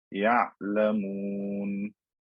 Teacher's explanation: the ayn is not short and abrupt like a hamza, but it's not very long either. It's kind of in between. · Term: tawassut